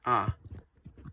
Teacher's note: a front open, which is ah